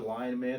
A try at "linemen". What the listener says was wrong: Sounds like you're saying lion men though. Linemen.